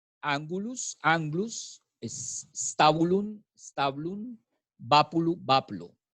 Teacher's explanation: La pérdida de la vocal átona interna. La vocal átona interna, como la U, por ejemplo, se pierde.